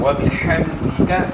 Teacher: ہا کی آواز گلے کے درمیان سے